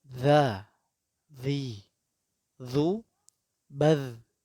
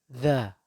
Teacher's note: Ujung lidah dikeluarkan sedikit, kemudian disentuhkan ke ujung gigi seri bagian atas. Jadi ujung gigi seri bagian atas mengenai lidah dan lidah agak terjulur sedikit, agak keluar sedikit dari gigi tersebut. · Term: huruf dzal